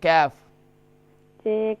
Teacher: Kaf from the root of the tongue and the hard palate. Hard palate.